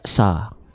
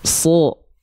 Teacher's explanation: Huruf shad ketika dia berharokat fathah, maka dia nggak dibaca sa. Tapi dia dibacanya so. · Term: huruf tebal